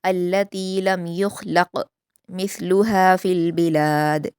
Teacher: लम में मीम साकिन के बाद या है तो इज़हार शफ़वी हो रहा है और युख़लक़ में ख़ा और क़ाफ़ दोनों को पुर पढ़ेंगे लेकिन सिर्फ़ क़ाफ़ पर क़लक़ला करेंगे, ख़ा पर नहीं।